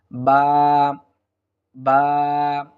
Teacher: দুই ঠোঁট মিলিয়ে দিলেই আমরা বা অক্ষরটি হরফটি আমরা পেয়ে যাব, বা।